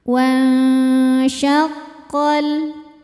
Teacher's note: Cara bacanya nun sukun disamarkan ke shin ya, disertai bunyi dengung. Samar dan dengungannya sama besar karena shin makhrajnya tidak terlalu dekat, tidak terlalu jauh dari nun. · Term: ikhfa hakiki